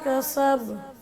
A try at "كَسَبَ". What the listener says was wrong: جی کسب پہ قلقلہ بھی کرنا ہے، کسب.